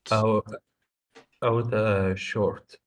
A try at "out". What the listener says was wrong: Well, I think that, normally out would be pretty big. Out. It's actually two sounds. Ow. Ow. I, ow. Those are the two sounds. I, ow.